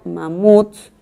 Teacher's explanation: Cuando yo la silabeo, digo mamuts, la última sílaba es tónica. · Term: palabra aguda